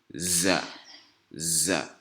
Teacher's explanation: on fait une vibration avec un sifflement à la fin. Donc, on commence par vibrer en sifflant à la fin.